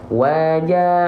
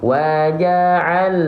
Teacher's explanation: Jadi kalau kita lafalkan lam sukun di sini, pastikan dia mengalir suaranya sedikit. Waja'alna, tuh, ngalir dia suaranya.